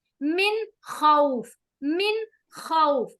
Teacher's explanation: नून को हम जाहिर कर रहे हैं, इसकी आवाज को शो कर रहे हैं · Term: इजहार